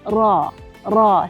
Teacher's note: Saya sebut ra ni ada getar tapi sikit.